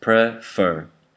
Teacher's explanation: So in the word prefer, there are two syllables, prefer. The first syllable is unstressed. That means you say fur stronger, so it's like an accent.